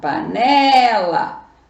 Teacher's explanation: paroxítona panela sílaba tônica é a penúltima sílaba